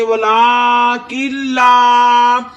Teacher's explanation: نون ساکن کے بعد لام آیا ہے، ادھر گنہ نہیں کرنا، گننے کے بغیر پڑھیں گے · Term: ادغام